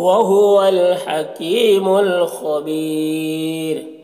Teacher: را کو باریک پڑھیں گے، کیونکہ را ساکنہ سے پہلے یا ساکن ہے